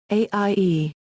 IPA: ø̈ː